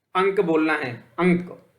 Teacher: इसमें क्या है, नाक से ज्यादा निकल रहा है तो यह अनुस्वार का प्रयोग हो गया